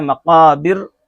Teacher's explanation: تم المقابر، مقابر میں جو را ہے اگر یہاں وقف کرتے ہیں تو مقابر کی را باریک ہے، اگر ملا کر کے پڑھتے ہیں مقابر کلا تو اس طرح پر پڑھی جائے گی. اگر یہاں رک رہے ہیں مقابر تو یہ را باریک ہوگی